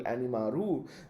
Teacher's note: Japanese English language learners may be tempted to add u after the closed syllable animal